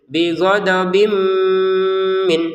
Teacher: kalau dilanjutkan maka pantulannya hilang langsung kepada tanwin bertemu mim. Dimasukkannya tanwin ke mim disertai dengungan bighodob menjadi bighodobim min seperti itu.